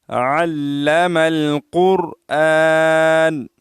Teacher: कुरान का कफ जो है दो नुक्ता है इस इसको हम मोटा अदा करेंगे · लाम का शद भी नहीं पढ़ते हैं और आईन को भी सही ठीक तरीके से अदा नहीं करते हैं आन की जगह हमजा बोलते हैं